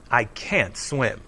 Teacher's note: the negative word can't is always stressed